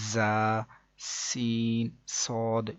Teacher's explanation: ان 3 حروف یعنی کہ زا، سین، صاد کو ادا کرتے وقت سیٹی کی طرح کی آواز نکلتی ہے، اس لیے ان حروف کو حروف صفیریہ یعنی سیٹی والے حروف بھی کہتے ہیں، جیسے کہ زا، سین، صاد۔